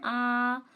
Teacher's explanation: अगर बोलेंगे हम आ तो पूरा मुंह खुलता है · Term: विवृत स्वर